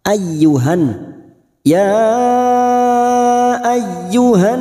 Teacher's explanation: masuk pada huruf ya yang bertasdid hanya masuk tanpa mendengung, tanpa ditahan lama-lama